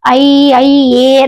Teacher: ಎ ಅಂತಕಂತ ದೀರ್ಘ ಸ್ವರ ಸೇರಿ ಏನಾಗ್ತದೆ ಐ ಆಗ್ತತ್ತದೆ ಐ ಐ ಎ ಕೊನೆಗೆ ಐ ಅಂದಾಗ ಕೊನೆಗೆ ಎ ಅಂತಕಂತ ಉಚ್ಚಾರಣೆ ಬರ್ತಾ ಇರ್ತದೆ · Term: ಸಂಧ್ಯಕ್ಷರ